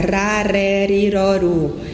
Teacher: Geralmente, esse R, né, de ponta de língua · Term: R de ponta de língua